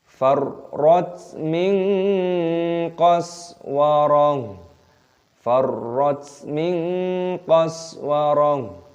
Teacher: Roknya tasdid ditekan, dimasukkan, taknya sukun, farrat. Farrat min qas, nun sukun bertemu dengan qaf, ikhfa disamarkan, min qas, sin sukun dibaca qaswarah, taknya diganti ha.